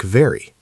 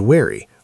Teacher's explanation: For the V sound, your upper teeth lightly touch your lower lip and you vibrate with voice.